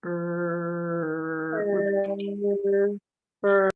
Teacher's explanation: a combination between the schwa and the R so it's going to be ER and here we have a